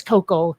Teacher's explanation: It's like Koukl with no vowel in between the K and the L.